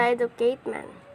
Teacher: The educated man and the peasant. The learner omitted the t sound in the word educated and pronounces as educate